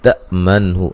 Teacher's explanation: حمزہ کو جھٹکے سے ادا کریں گے، نون ساکن کا اظہار ہے، غنہ نہیں کریں گے